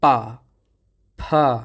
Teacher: चिपकना छोड़ते हैं तो एक प्रेशर से वायु निकलती है अर्थात जो दोनों होठ थे आपके यह वायु का या श्वास का अवरोध कर रहे थे · जब बोलो आप पा फ तो देखो फ जब बोलते हैं दोनों होठ जब छोड़ते हैं आपस में चिपकना छोड़ते हैं तो एक प्रेशर से वायु निकलती है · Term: ओष व्यंजन, ओष्ठ व्यंजन